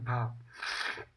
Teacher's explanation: हिंदी की स्पर्श घोष महाप्राण ओष्ठ व्यंजन ध्वनि है